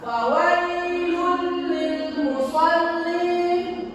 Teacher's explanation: Huruf lam tersebut harus menyatu dengan huruf lam yang keduanya sesudahnya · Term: idgham bila guna